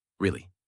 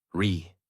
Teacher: Voice rises and falls. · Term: natural American tone